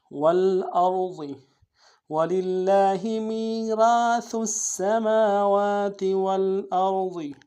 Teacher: را کو موٹا ادا کریں گے اور ضاد کو موٹا ادا کریں گے